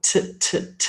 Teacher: I'm using my teeth there, my tongue against my teeth.